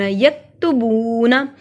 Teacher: یکتبون میں کاف جو ہے مرکز والا باریک پڑھا جاتا ہے، کاف مرکز والا ہمیشہ باریک پڑھا جاتا ہے، چاہے اس سے پہلے زبر ہو یا پیش ہو یا زیر ہو، جو بھی ہو یا اس کے اوپر ہو، ہم مرکز والے کاف کو پڑھتے ہی باریک ہے۔